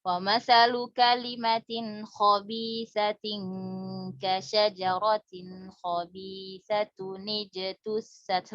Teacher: Kalau misalnya bersambung, maka hamzah wasal nggak dibaca.